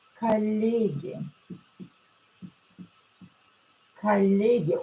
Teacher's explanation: O will be pronounced as A because it's not stressed.